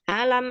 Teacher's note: di sini ada mim sukun bukan mim bertasydid ya jadi jangan lama-lama